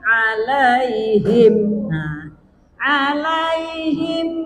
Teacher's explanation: Mim mati disambut hamzah, namanya izhar syafawi, ya, tidak dengung.